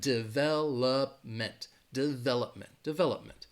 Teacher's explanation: The stress is going to be on that second syllable, development, development. And that third syllable has that schwa